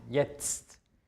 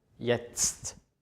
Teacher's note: Also man hört erst ein Z und dann noch ein T am Ende.